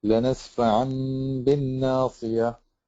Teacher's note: You have to change the noon into a meme or the tanween into a meme, which you did. You also have to close your lips on the meme so that it's a hidden meme and not an apparent meme. And then you have to pronounce the ghunna.